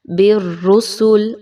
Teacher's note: با کو را کے ساتھ مضبوطی کے ساتھ ملایا جا رہا ہے